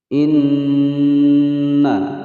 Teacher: nun bertasydid ditekan dan ditahan selama 2 ketukan, gunnah musyaddadah.